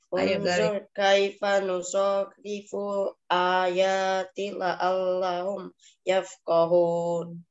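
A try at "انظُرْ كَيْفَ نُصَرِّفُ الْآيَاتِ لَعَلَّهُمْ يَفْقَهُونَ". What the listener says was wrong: Oke, bagus. Terima kasih.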